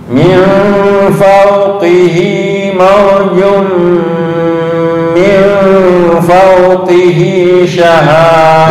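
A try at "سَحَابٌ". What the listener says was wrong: Bukan syahab, sahab. Sahab. Fawqihi sahab.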